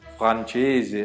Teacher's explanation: Tudo bem se você não conseguir vibrar muito bem a língua, porque também a gente tem outros R's regionais na Itália. Tem o la R moscia, que é la R muito presente na Emília-Romanha, por exemplo, então ele fala r, mais próximo ao francês, então a gente falaria francese, alguma coisa assim.